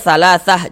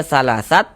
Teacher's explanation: kalau kita berhenti tepat di huruf ta marbutoh, maka dibaca huruf ha. Ini kita berwakaf kita ya, berhenti tepat di huruf ta marbutoh, maka huruf ha yang dibaca.